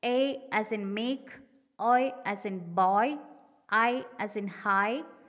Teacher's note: diphthongs and the centering diphthong air in english are falling diphthongs in all these diphthongs the second element is less prominent than the first